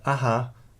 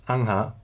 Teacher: an H sound between two A or two A vowels developed an uvular nasal, so that original aha came to be pronounced angha.